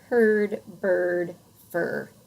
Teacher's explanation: in Americanized English, at least most dialects, we say ER, IR, and UR the same. We say it like in herd, bird, fur. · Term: R-controlled vowels